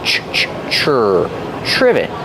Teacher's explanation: It starts with tr. So we make the ch sound like chicken together with the r.